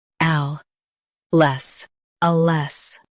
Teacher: Stress AL and keep less light.